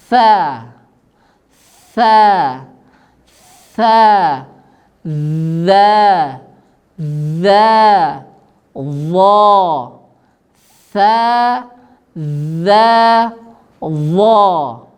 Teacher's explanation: Tetapi kata para ulama di dalam kitab-kitab tajwid disebutkan, ya, syarat dari 3 huruf ini, ya, syarat mengeluarkan 3 huruf ini yang benar adalah ujung lidah kita, ya, disentuhkan dengan ujung gigi seri bawah dengan syarat, dengan catatan ujung lidah sedikit terlihat. Jadi sehingga orang yang di depan kita bisa melihat ujung lidah kita keluar sedikit, ujung saja yang dikeluarkan, tidak semua lidah.